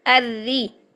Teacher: اس را کو باریک کریں گے کیونکہ را کے نیچے زیر آ گئی ہے